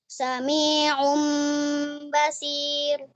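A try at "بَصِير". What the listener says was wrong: Basir. Sirnya tebalkan. Basir. Basir. Roknya tipiskan. Basir.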